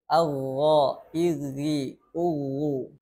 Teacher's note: dalam keadaan tasdid pun tetap ada aliran suaranya tidak terputus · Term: rokhaah